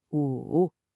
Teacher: For 5, the third tone has to complete its full dip. I want you to imagine your voice physically dropping low and then coming back up. It's not flat, it's a valley.